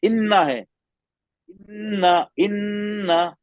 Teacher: नाक में आवाज को पकड़ के रखना, लंबा करना। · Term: गुन्ना